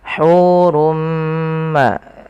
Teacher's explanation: Asalnya hurun bertemu dengan mim. Tanwinnya masuk kepada huruf mim dan diganti bunyinya menjadi bunyi mim. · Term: idgham bighunah